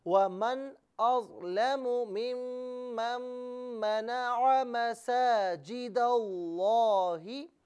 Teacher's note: यहाँ ज़बर है तो लफ्ज़ अल्लाह की लाम को हम पुर करके पढ़ेंगे।